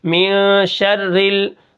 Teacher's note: یہ جو را ہے جو تشدید ہوتی ہے یہ 2 بار پڑھی جاتی ہے، ایک بار پیچھے والے حرف کے ساتھ مل کر شین را زبر شر، ٹھیک ہے۔